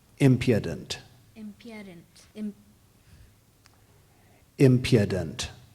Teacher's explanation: The accent is on the first syllable.